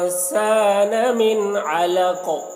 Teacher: यहाँ पर नून में इख्फ़ा नहीं करना है क्योंकि नून साकिन के बाद आइन है हुरूफ़ हल्के में से, तो यहाँ पर इज़हार होगा, तो जल्दी पढ़ेंगे।